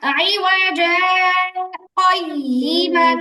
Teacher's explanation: দুই শব্দের মাঝখানে এক মুহূর্তের জন্য আওয়াজ বন্ধ কিন্তু শ্বাস চালু থাকবে।